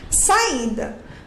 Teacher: Quando eu faço a separação, o A e o I, eles ficaram separados. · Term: hiato